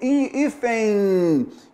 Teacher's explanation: veja que esse N, ele tem um som de I, ele é uma semivogal